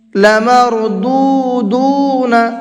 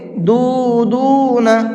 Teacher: دونوں جگہ پر واو مدہ ہے تو دونوں کو کھینچ کر کے پڑھیں گے۔